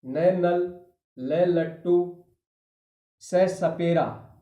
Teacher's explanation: दांतों से थोड़ा सा ऊपर और मसूड़ों के साथ जीभ के स्पर्श से ये व्यंजन बोले जाएंगे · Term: वर्त से व्यंजन